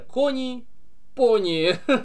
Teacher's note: Женская рифма. Ударение падает на предпоследний слог